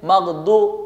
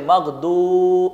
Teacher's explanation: اس لیے کہ پیش کے بعد واو ساکن موجود ہیں، واو ساکن موجود ہونے کی وجہ سے اب اس پیش کو نہیں، اس واو کو آپ کھینچتے ہیں، جس کو واو مدہ کہا جاتا ہے